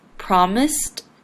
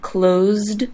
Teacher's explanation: promised has an S sound and closed has a z sound that's why promised has a ending and closed has the d